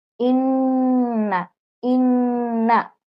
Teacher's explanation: নাকের বাঁশি হতে গুন্না উচ্চারিত হয় মানে নাক হতে গুন্না হয় এই যে এটা নাক এখান থেকে · তিন আলিফ এরম গুন্না ধরে রাখতে হবে · যেমন হামজা নুন জের ইন, নুন জবর না, ওয়াজিব গুন্না। ইন্না, 3 আলিফ পরিমাণ গুন্না ধরে রাখতে হবে।